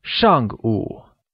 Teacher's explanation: where Shang meaning before is said with a falling tone